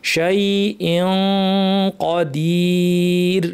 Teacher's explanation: জিব্বা কফের মাখরাজে সম্পূর্ণ লাগিয়ে, কফ যেহেতু ভারী এই জন্য ভারী গুণনা করতে হবে, শাই কদির, শেষে ইয়া সাকিন এবং রতে থামার কারণে র সাকিন, মাদ আরিদ আমরা 2 আলিফ টেনে থামবো। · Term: ইখফা